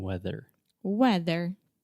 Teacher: we have the th sound our tongue is outside of our mouths and we are biting our tongue and saying weather weather yes and this is also just a